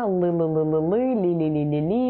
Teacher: Вот они говорят там «любимая» или что это, «солнышко», «л», «л», и кончик языка выходит за границу зубов. На самом деле «л» артикулируется тоже прикасанием кончика языка к альвеолам.